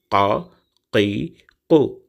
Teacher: ரெண்டு புள்ளி உள்ள எழுத்து இருக்கு இல்லையா அது வந்து காஃப் அப்படின்னு சொல்லுவாங்க காஃப் அப்படின்னு அந்த அடித்தொண்டையிலிருந்து வெடிச்சு வரணும்